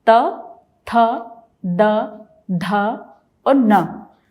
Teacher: तो पांचों को बोलते हुए जिह्वा दंत के पीछे स्पर्श करती है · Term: दंत्य